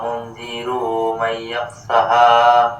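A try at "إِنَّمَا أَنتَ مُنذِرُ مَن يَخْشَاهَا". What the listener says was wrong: یہاں آپ نے را کو کھینچ دیا، منذرو کھینچ دیا، کھینچے نا، منذر من یخشاہا۔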